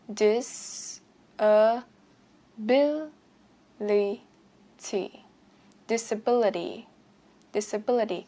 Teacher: trọng âm disability như mình vừa phát âm ban nãy là trọng âm 3